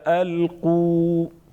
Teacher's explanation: الف مدہ ایک الف کے برابر کھینچیں گے